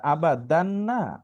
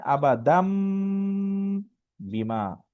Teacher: হরফ পরিবর্তনটা হচ্ছে ওই যে নুন সাকিনের পরে বা আসলে, নুন সাকিন অথবা তানবিনের পরে যদি বা আসে, তখন এই নুনটা মিমের মতো উচ্চারণ হয়